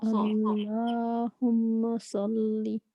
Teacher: صلی زبان پیچھے سے آپ کے اٹھے. اللہم صلی راؤنڈ لپس نہیں ہونا چاہیے، مجھے لگا آپ کے راؤنڈ لپس ہو رہے ہیں.